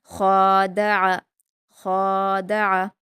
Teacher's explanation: خوا پر الف مدہ ہے، 2 حرکات کھینچ کر پڑھیں گے اور خوا کو حلق سے ادا کریں گے، بھاری پڑھیں گے۔ دال پر حرکتیں جلدی پڑھیں گے اور عین پر بھی حرکتیں، اس کو بھی جلدی پڑھیں گے، لیکن عین کو حلق سے بھی ادا کریں گے۔